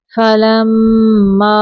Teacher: میم مشدد پہ غنہ کریں گے